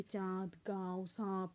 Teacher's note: जिसका उच्चारण मुख और नाक दोनों से होता है उसे अनुनासिक कहते हैं।